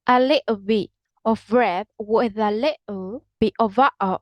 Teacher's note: In Cockney, it is common to use a glottal stop.